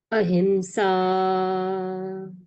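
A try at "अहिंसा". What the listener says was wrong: What I can see that you are pronouncing ahimsa. So it will not be pronounced as ma. Though there is M over here,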